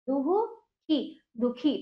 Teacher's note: दा और खा के बीच में हा का उच्चारण हो रहा है